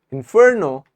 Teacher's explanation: have showed you which one is the correct Inferno is correct we actually give stress on the second syllable